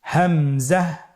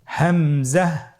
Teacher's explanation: হা হরফটি যেখান থেকে আমরা উচ্চারণ করেছি একই জায়গা থেকে আমরা হামজা হরফটি উচ্চারণ করব হলকের শুরু হতে।